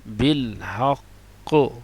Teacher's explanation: تشدید تو باقی رہے گی لیکن حرکت اس پر ظاہر نہیں ہوگی. جیسے اوپر آپ دیکھیں پہلے تھا بالحقی، اور نیچے والے پہ دیکھیں تشدید تو باقی ہے لیکن حرکت کوئی بھی نہیں ہے.